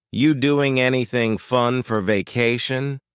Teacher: again something interesting happens at the beginning of the word anything we link doing with anything because we're going to drop the G · the ru is completely gone · we're going to start this question with just you which is reduced to yah